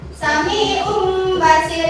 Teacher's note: Dalam hukum iqlab, cara membaca iqlab itu adalah menggantikan huruf nun ke huruf mim